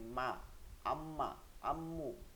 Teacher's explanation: দুই ঠোঁটের শুকনা জায়গা থেকে মিম উচ্চারিত হয় মানে দুই ঠোঁটের যে সামনে যে শুকনা জায়গাটা আছে বাহিরের দিকে